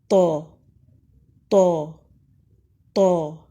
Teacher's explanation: زبان کا پچھلا حصہ اوپر اٹھتا ہے جس سے موٹی اور بلند آواز آتی ہے تو تو تو۔ ہونٹ گول نہیں ہوں گے۔